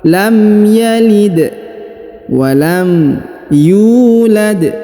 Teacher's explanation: huruf Dal berharakat sukun ya maka dibaca pantul atau Qalqalah